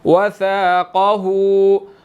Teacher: قاف موٹا ہے، ہا کے اوپر الٹا پیش ہے اور چھوٹی مد ہے، یہاں پر ہم نے اس کو 2 to 3 سیکنڈز کھینچ کر پڑھنا ہے